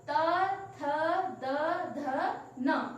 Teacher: आप देखेंगे कि अगर हम इन वर्णों का उच्चारण कर रहे हैं तो इसमें दंत का प्रयोग हो रहा है। इनका मतलब प्रयोग करते समय हमारे दांतों के बीच से यह बोले जाते हैं, इसलिए इनको कहते हैं दंतः। दंत से जो बोले जाने वाले वर्ण होते हैं वह दंतः कहलाते हैं।